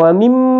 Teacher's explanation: mim baca dengan gunnah dengan ditahan antara 2 sampai 3 harakat · gunnah ditahan sampai 2 sampai 3 harakat sebelum disebut ma, ya. Wa mimma baru dipanjangkan ma karena dia adalah mad tabi 2 harakat juga, ya.